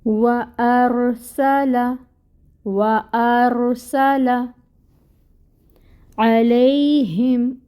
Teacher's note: عین وسط حلق، اور فتحہ 1 کاؤنٹ